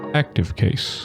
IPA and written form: ˈæktɪv ˈkeɪs (active case)